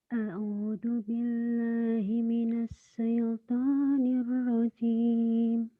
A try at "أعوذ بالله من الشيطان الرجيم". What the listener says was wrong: Ah, Ibu lagunya bagus, tapi kan di situ shin ya Bu ya. Bukan sin kecil, tapi shin.